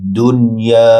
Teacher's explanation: দুন ডাল নুনের সাথে যুক্ত হবে, নুনে গুন্না নেই। ইয়া এক আলিফ লম্বা হবে।